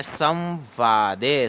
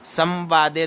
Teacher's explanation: अनुस्वार को यहां पर आधा व पढ़ा जाता है